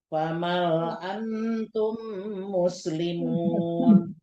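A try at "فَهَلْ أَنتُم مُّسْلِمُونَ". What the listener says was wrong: Fahal bukan famal.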